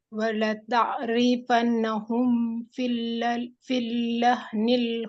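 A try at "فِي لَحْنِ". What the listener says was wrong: Satu-satu. Nggak ada tasydid. Fi lahnil.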